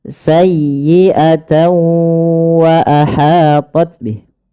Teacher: Karena huruf tanwinnya dimasukkan ke huruf waw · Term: idgham